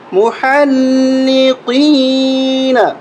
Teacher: قاف کو موٹا کر کے پڑھیں گے اور قاف کو یا کے ساتھ ملائیں گے، ایک الف کے برابر کھینچیں گے